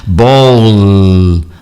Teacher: Em português a gente fala como se fosse um U, em inglês não.